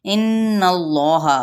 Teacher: गुन्ना करते हुए इसमें जलाला का लाम पुर पढ़ा जाएगा, हा की हरकत को लंबा नहीं किया जाएगा।